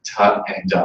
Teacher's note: So the and the in Spanish, the tip of the tongue actually goes on the back of the teeth, making them dental. Whereas in English, most varieties, or most inner circle varieties of English, it's an alveolar sound.